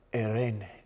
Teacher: lower your voice a little bit and make more breathy